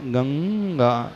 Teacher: जैसे गंगा पढ़ते हैं ना, गंगा, थोड़ा सा नासिका का पुट रहेगा और कंठ का पुट रहेगा, दोनों के मिलने से जो उच्चारण होता है, नासिका का भी प्रयोग होगा और कंठ का भी प्रयोग होता है उसमें। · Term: अनुस्वार, अनुस्वार का उच्चारण